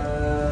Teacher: पहले जुबान सख्ती से लग जाएगी उसके बाद थोड़ा सा आवाज जारी रहेगा